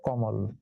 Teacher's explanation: মাঝে ময়ের সঙ্গে যে অ আছে সেই অটা এখন ও হয়ে গেল, মানে সংবৃত হয়ে গেল, এই জন্য হয়ে গেল কমল।